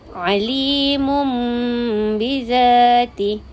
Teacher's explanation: Jadi bunyi tanwin itu telah menjadi bunyi mim dan dengung 2 harkat.